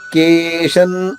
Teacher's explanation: ష తర్వాత ఉన్న అనుస్వరాన్ని న అనే అక్షరంతో ఉచ్చరించాలి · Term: అనుస్వర ఉచ్చారణ